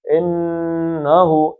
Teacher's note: انہو اس غنے کو دو حرکتیں کھینچنا ہے